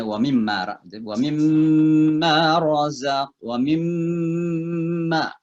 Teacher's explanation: Jadi wa mimma itu idgham mim ya. Jadi harus didengungkan di situ ya.